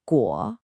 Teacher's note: Because it's a third tone at the end of a phrase, you have to do the full dip and rise.